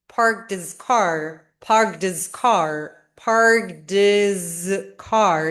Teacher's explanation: So you don't hear the h sound. · we drop the H sound and we link the D to the E sound in his. So it just sounds like parked his car, parked his car, parked his car.